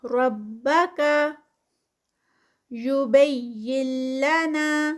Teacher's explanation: یہاں پر نون ساکنہ ہے اور نون ساکنہ کے بعد لام آ گیا ہے تو یہاں پر نون جو ہے وہ سکپ ہو جائے گا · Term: ادغام